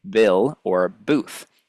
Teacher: And we also have this word, or this sound, b, which is at the start of words like bill or booth. This is also a bilabial stop sound because the air is completely closed. at the two lips.